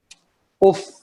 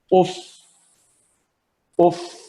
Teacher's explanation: اب فا جو ہے اس کی ساؤنڈ ختم ہو گئی ہے، فا کی کوئی ساؤنڈ نہیں ہے لیکن ہوا باقی ہے جو نکل رہی ہے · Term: ہمس